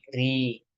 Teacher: Kalau hurufnya kasroh, berharokat kasroh, huruf ra-nya berharokat kasroh, maka dibaca tarqiq ri